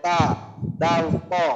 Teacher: যে এখানে তো আমাদের তা এবং তা মাখরাজ একটাই, যে জিহ্বার আগা সামনের উপরে দুই দাঁতের গোড়ার সঙ্গে লাগায়